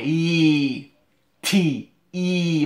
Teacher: My tongue goes right behind my teeth. And after the big pop, after the t, I keep my tongue up high. E, T, E. My tongue stays up high.